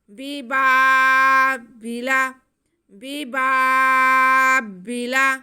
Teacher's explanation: با کی آواز کو ہم کھینچ کے پڑھیں گے، پہلے با کی آواز کو نہیں، دوسرے با کی آواز کو ہم کھینچ کے پڑھیں گے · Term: الف مدہ